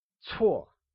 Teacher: is pronounced using a falling tone, or the fourth tone